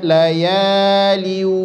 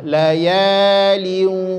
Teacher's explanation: tanwin ketemu huruf waw, harus sampai ke rongga hidung, jangan hanya layalin, itu salah, layalin, sampaikan ke rongga hidungnya.